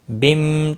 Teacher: تنوین کے بعد حرف یرملون کا میم ہے، ادغام با غنہ ہوگا